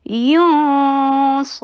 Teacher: Heavy اخفا کیجیے. صاد کو heavy کیجیے اور فتحہ شارٹ رکھیے